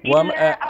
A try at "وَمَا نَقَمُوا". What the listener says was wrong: ببين ميم زمه داره بعد از ميم حرف واو داریم وما نقموا وما نقموا منهم.